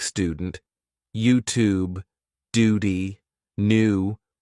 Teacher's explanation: in American English in words like student YouTube Duty new you would just say the sound oo instead of saying you